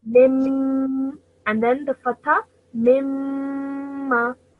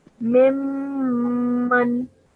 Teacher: So that's why when you join the meme to the meme, you hold the sound of meme in your nose for 2 seconds. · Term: meme mushaddad